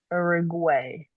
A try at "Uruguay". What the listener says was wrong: Oh, I heard guay again.